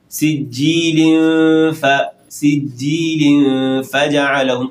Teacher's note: فا کا مخرج ہے اوپر کے دو دانت جب نچلے ہونٹوں کی تری پر لگے، اس فا کی طرف آپ نے اخفاء کو لانا ہے